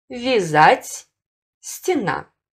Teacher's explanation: В первом предударном слоге после мягких согласных буквы «я», «е» произносятся как звук «и» с призвуком «э».